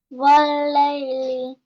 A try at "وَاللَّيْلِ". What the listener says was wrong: Connect the vaw with lam immediately without any delay. والليل.